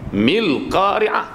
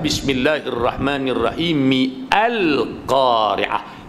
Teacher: Maka a tu sudah tidak dibunyikan lagi. Kerana hamzah di situ adalah hamzah wasal. Dia berjangkit dengan baris huruf yang sebelumnya.